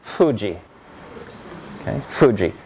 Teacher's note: it's voiceless its non-nasal it's bilabial and it's a fricative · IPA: [ɸ]